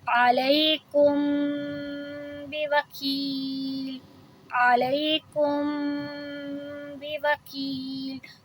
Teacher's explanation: تو یہاں ہم اخفاء شفوی کر رہے ہیں، آواز کو دو حرکہ لمبی کر رہے ہیں